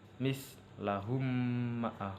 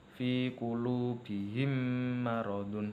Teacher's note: posisi bibir ketika membaca idgham mimi dalam kondisi tertutup dan sedikit bergetar